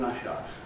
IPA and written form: ˋrʌʃ aə (rush hour)